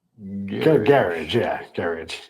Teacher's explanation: it's got a softer ZH sound at the end.